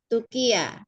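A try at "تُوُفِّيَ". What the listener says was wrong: Fa. Pakai fa, Bu, bukan kof. Fa. Ya, Tufia.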